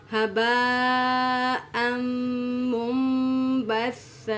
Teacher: ہباء مد ہے، مد متصل واجب جس کو ہم 5 الف کے برابر کھینچ کے پڑھتے ہیں.